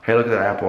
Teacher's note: with the Southern accent, what happens is a lot of each vowel sound gets this sort of guttural sound, like an sound.